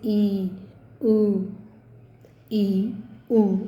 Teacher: जिन स्वरों का उच्चारण करते समय हमारा जो मुख है वो कम खुलता है उसे हम कहते हैं संवृत स्वर। जैसे ई, उ, ई, उ बहुत कम खुल रहा है तो ये है संवृत स्वर।